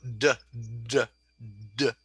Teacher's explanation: I'm using my larynx. I'm using my voice. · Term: voiced